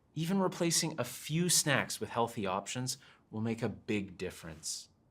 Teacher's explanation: adding stress to few and big softens the information